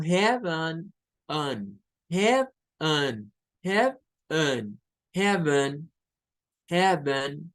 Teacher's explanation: Cuando lo escuchamos, nuestro oído nos traiciona y nos hace pensar que está sonando una E, pero no, está sonando un schwa.